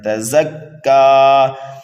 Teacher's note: زا کو سختی کے ساتھ پڑھنا ہے، سیٹی کی آواز دے کر کے پڑھنا ہے ، تزکا، یہاں پر بھی وقف بالسکون ہو رہا ہے، جہاں